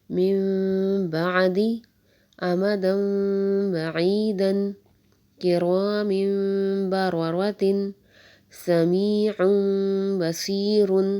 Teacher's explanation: جب بھی نون ساکن یا تنوین کے بعد با آ جائے گا تو نون ساکن یا تنوین کو میم سے بدل کر غنہ کے ساتھ پڑھیں گے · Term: اقلاب مال غنہ